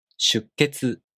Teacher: The sound after a small tsu is the K consonant. You hold the tongue position for the K sound without releasing it and make a pause for one beat.